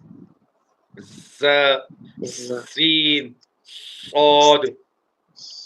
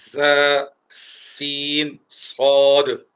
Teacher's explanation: زا سین صاد ادا ہوتے ہیں زبان کی نوک دونوں دانتوں کے پیچھے سے آ کر ٹکرائے